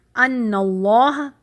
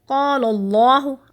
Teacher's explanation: ان اللہ میں کیا ہوا، نون کے اوپر زبر ہے، یعنی اللہ کے نام سے پہلے زبر آ رہی ہے، تو کیا کریں گے، اللہ کے نام کو ہم ہیوی پڑھیں گے، موٹا کر کے پڑھیں گے۔ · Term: تفخیم